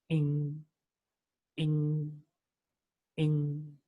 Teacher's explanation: After the vibration, it finds an obstacle again there in the mouth cavity because back of the tongue raises towards the velar, that is the soft palate, makes a contact there. So the air is not allowed to be released from the mouth cavity.